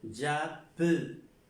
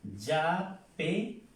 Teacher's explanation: Porque me anteponen dos consonantes iguales y estas dos consonantes iguales le dan el sonido a una E como si fuera con un acento o como la E en español. Pero se pronuncia j'appelais.